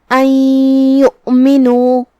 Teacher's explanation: ادغام کا معنی ہے حرف کو حرف میں داخل کرنا، تو ہم یہ نون کو یا میں داخل کر کے غنہ اور تشدید کے ساتھ یہ حکم کو ادا کریں گے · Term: ادغام بغنہ